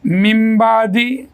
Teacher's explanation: اور تیسری بات اس میں جو آخری ہے وہ نون ساکن کی آواز کے بعد با آ جائے. تو نون ساکن کی آواز چھوٹی میم میں بدل جاتی ہے، جیسے ممبادی، یہاں چھوٹی میم آ جائے گی، ممبادی.